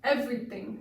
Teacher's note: increase your volume on the EV part of the word